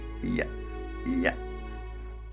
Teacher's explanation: y is considered as a semivowel sound because while articulating this sound, initial sound is something like e.